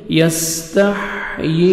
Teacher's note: سین کو اچھی طرح ادا کریں گے سٹی کے ساتھ، تا کو باریک پڑھیں گے، ہا اچھی طرح ادا کریں گے تاکہ ہا میں ساؤنڈ مکس نہ ہو۔